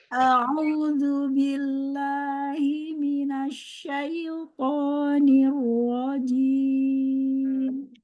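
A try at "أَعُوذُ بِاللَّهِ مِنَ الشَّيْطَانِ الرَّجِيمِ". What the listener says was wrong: Domahnya sempurna lagi, Mi. Monyong lagi.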